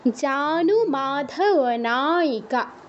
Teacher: জানু নুতে কিন্তু দীর্ঘ উকার আছে তো এটা কিন্তু দীর্ঘ করতে হবে